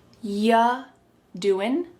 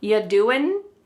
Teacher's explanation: When we say you doing anything fun, instead you're going to hear y doing y. The word you is reduced to y.